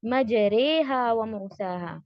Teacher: مجریہا، اب یہاں پر دیکھیے میں نے مجری نہیں کہا، یعنی کہ کسرہ نہیں دیا ہے، نہ ہی الف مد ہے نہ فتحہ ہے، مجراہا ایسا بھی نہیں ہے، بلکہ ان دونوں کے درمیان ہے، اور ای ان دونوں کے درمیان کا ساؤنڈ ہے اے، ٹھیک ہے؟